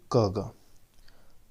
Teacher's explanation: क ग बोलने से हमारे मुंह से कम हवा निकलती है, इसे ही अल्प प्राण कहा जाता है।